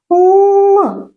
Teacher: під час вимови звук л губи і зуби відкриті кінчик язика притиснутий до верхніх зубів по боках нашого язичка щілинка якими виходить пові л на цьому занятті ми вивчимо нову літеру